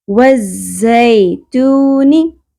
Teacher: ز کو شدت سے ادا کریں گے، سیٹی کی آواز بھی ہوگی اس میں۔ والزیتونی، زا زبر یا ساکن حرف لین نرمی سے ادا ہوگا۔